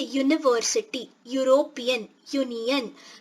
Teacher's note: So YU, that is the consonant sound of Y, is more predominant.